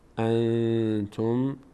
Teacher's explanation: و انتم نون بعدش تا اخفا میشه